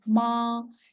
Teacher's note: first tone is a flat tone